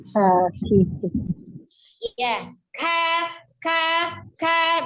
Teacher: huruf Kaf secara makhraj adalah pangkal lidah bawah bertemu dengan langit-langit yang keras ya berarti agak ke depan di huruf Kanya ya huruf kafnya